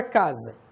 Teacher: o S, que nesse caso aqui tem som de Z e não de S